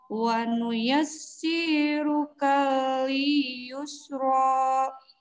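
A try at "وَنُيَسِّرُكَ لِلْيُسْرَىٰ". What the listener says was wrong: Pendek semua. Wa nuyassiruka lil yusro, ro-nya yang panjang.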